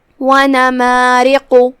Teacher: یہاں را کا حکم ہے ترقیق، کیونکہ اس کے نیچے زیر ہے. پھر حرف القاف ہے، قاف کی ادائیگی زبان کے جڑ اور تالو کے نرم حصے سے ہے، قاف حروف التفخیم میں سے ہے، لہذا اسے بھاری آواز میں ادا کرنا ہے.